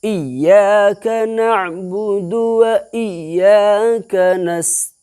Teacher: اس کے اوپر تشدید آ گیا تو اس کے آواز میں سختی ہوگی، 2 مرتبہ تو پڑھیں گے یا کو، لیکن سختی ہوگی